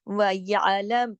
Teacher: आइन को साथ मिला के पढ़ना है बारीकी के साथ, हलक से आवाज आनी चाहिए